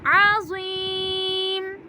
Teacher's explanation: میم کے نیچے جو زیر ہے میں نے وہ زیر نہیں پڑھی کیونکہ میم سے آگے چھوٹی سی توئیں آ رہی ہے اس لیے ہم ادھر وقف کریں گے۔